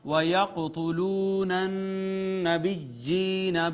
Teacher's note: یہاں پہ ناظرین آپ دیکھیں قاف پہ کلکلہ ہوگا، واو مدہ ہے، اور نون کے اوپر چونکہ شد ہے اس وجہ سے یہاں پہ غنہ ہوگا. یا مدہ، یہ دوسری یا مدہ ہے.